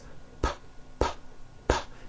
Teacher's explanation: Are your vocal cords vibrating when you're saying the sound P, p, p, p? You feeling any vibrations in your throat? No, your vocal cords are not producing a sound.